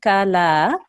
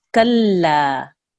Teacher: we really have to harden that mushaddad lam